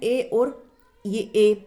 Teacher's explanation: कंठ तालु दोनों से मिलाकर के बोलते हैं